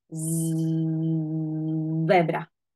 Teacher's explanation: jediný rozdiel v nich je znelosť, že z je znelé a s je neznelé.